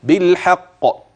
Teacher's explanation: اي بالصدق وتنبه للقلق في قوله بالحق عند الوقف هكذا بالحق ولا تجعل بين القلقله والقاف فاصلا بسكته لطيفه